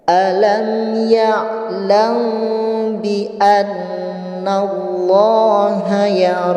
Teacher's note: dengan cara membaca huruf M nya ditahan selama dua harokat · Baik, sekali lagi saya simpulkan, yang disebut dengan hukum ikhfa syafawi yaitu bila terdapat mim mati bertemu dengan huruf ba, maka suara M-nya di situ harus disamarkan dan disertai dengan hukum gunnah dengan cara membaca huruf M-nya ditahan selama 2 harokat